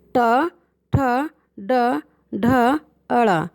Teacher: Third टा वर्ग, ये मूर्धा, इसमें आपकी जो टंग है वो हल्की सी मुड़ जाएगी ऊपर की तरफ।